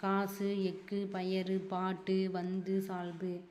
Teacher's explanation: குசுடு துபுர் வந்து 6 வல்லின உகரம் வந்து சொல்லின் இறுதியில் வரும்போது தான் ஒரு மாத்திரைக்கு பதிலாக அரை மாத்திரையே ஒலிக்குது. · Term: குற்றியல் உகரம்